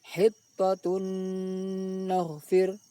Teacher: bunyi tanwin dimasukkan ke dalam bunyi nun sambil didengungkan. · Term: idgham bi ghunnah